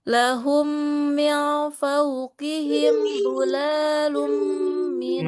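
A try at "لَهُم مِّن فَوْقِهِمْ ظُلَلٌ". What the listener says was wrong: Nah, itu lamnya nggak boleh panjang ya, Panjang dia lamnya.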